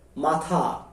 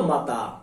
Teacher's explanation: মহাপ্রাণ ধ্বনি যখন অল্প প্রাণ ধ্বনির মতো উচ্চারিত হয় তাকে আমরা বলছি ক্ষীণায়ন